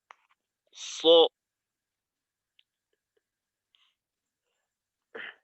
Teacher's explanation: এই যে আমাদের মাখরাজের কাজটা হইল, এই মাখরাজ ঠিক রেখে জিহ্বার মধ্যখানটা উপরের তালুর সাথে লাগান। জিহ্বার আগা সামনের নিচের দুই দাঁতের আগার সাথে থাকবে, জিহ্বার মধ্যখানটা উপরের তালুর সাথে থাকবে। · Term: সদ